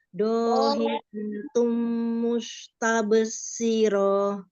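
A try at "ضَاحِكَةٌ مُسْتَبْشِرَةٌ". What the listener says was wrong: Masih jangan siroh. Siroh langsung.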